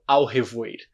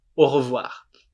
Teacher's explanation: A gente não fala ao, a gente fala o. O mesmo. O do português.